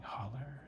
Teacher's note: a typical way of Southern speaking where the long O and A vowels get translated into ERs